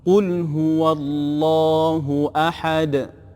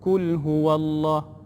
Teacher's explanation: Qaf, huruf qaf kena jaga. Qul qaf, tebalkan sikit bunyi dia. Jangan baca kul huwallah, kul tu jadi huruf kaf.